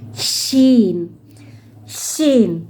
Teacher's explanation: Shin dia mengeluarkan udara yang banyak.